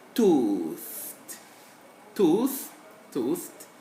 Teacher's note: it's a fricative okay dental fricative